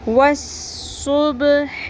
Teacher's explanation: صاد کو پر رکھیں اور صاد کو پر کرنے کے ساتھ ساتھ سیٹی کی آواز بھی آنی چاہیے